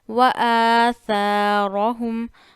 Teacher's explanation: وآ میں الف پہ کھڑا زبر ہے، ثا میں الف مدہ ہے، تو دونوں کو برابر کا کھینچے کیونکہ کھڑا زبر اور لیٹرز آف مدہ ایک جتنے کھینچے جاتے ہیں.